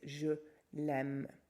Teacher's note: because we've got the two vowels together again, we're going to drop the a